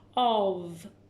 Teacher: it's not making the f sound, it's making more of a v sound